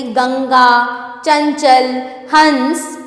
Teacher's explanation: प्रत्येक वर्ग के पंचम वर्ण के स्थान पर इसका प्रयोग होता है। अनुस्वार का उच्चारण नाक की सहायता से किया जाता है